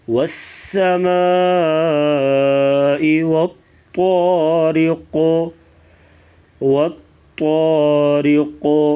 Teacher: 3 سے 4 الف کے برابر اس مد کو لمبا کر کے پڑھا جائے گا۔ والطارق، طا کو موٹا کریں گے اور قاف ساکن ہے، وقفاً ساکن ہوگا تو یہاں پر قلقلہ کریں گے اور قاف کو پور بھی پڑھیں گے موٹا۔